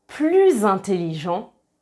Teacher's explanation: quand on fait la liaison avec un s, on prononce le son [z] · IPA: [pluz]